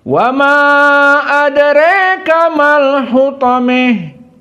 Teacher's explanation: Ujungnya ta al-marbutah dan adra ini dari usul qiraah Al-Kisai dibaca dalam keadaan al-imalah al-kubra